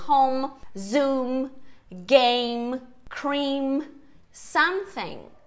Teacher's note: M em posição de final de sílaba ou de palavra, esse som encosta os lábios.